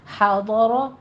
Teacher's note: ادا کو نرمی سے زال کو پڑھنا ہے. حاضر ہا وسط حلق سے باریک آواز کے ساتھ، ضاد کو پر پڑھیں گے